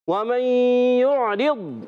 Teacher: وَمَن يُعْرِضْ میں واو کی ادائیگی ہونٹوں کی گولائی سے